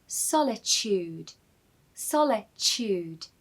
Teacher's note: The T in this word is really a CH sound.